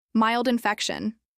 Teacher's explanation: Mild rhymes with child, and the stress in infection is on feck.